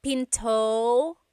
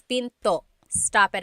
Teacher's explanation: Don't forget to stop the sound at the end. That's called a glottal stop.